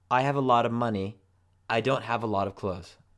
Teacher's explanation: the pronunciation of of becomes a schwa